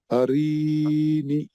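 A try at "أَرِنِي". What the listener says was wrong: रा को क्यों खींचे आप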